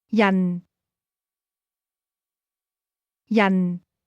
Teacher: This word is pronounced with a falling tone.